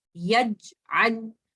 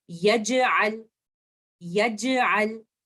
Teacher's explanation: You can feel the gap after jim, but because jim is also a qalqala letter, after shidda, I have to bounce letter jim when it is sakin. So I will say yaj'al, yaj'al, like this.